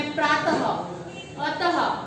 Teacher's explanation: इस 2 मात्रा को हम यहाँ पर विसर्ग कहते हैं, जिसका उच्चारण करते समय प्रातः, अतः, तो इसका ह का उच्चारण होता है